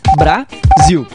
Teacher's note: o som do zil é mais forte e se prolonga quando falamos? Então, zil é a sílaba tônica.